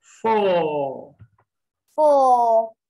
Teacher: when r comes at the end of a word or syllable it is not pronounced